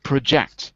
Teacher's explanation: When it's an action, we put the stress on the second syllable.